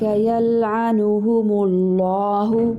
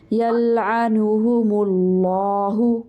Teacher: أولئك يلعنهم الله لام اس میں جلالہ کو موٹا کریں گے. جہاں پر اللہ ہوگا نا اللہ کا لفظ ٹھیک ہے اس میں جو لام آ رہا ہوگا اس کو موٹا کریں گے. جب اس سے ماقبل پیش ہوگا یا زبر ہوگی یا میم کے اوپر پیش آ رہا ہے تو ہم اللہ کا لام موٹا کریں گے یلعنہم اللہ.